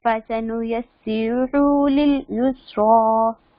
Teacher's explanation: فسنيسره جو الٹی پیش ہوتی ہے اس کو بھی ہم کھڑی زبر اور کھڑی زیر کی طرح لمبا کرتے ہیں تھوڑا سا